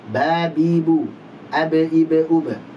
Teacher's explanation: Huruf ba dua bibir nempel.